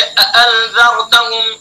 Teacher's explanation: दोनों हमजा को तहक़ीक़ से यानी खूब साफ साफ अदा करना चाहिए